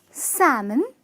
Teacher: it's salmon, with the L being silent.